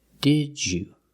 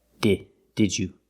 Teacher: The second D changes to the j sound, like juice and jump.